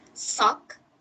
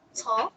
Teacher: stopping voiceless fricative to voiceless plosive t at the initial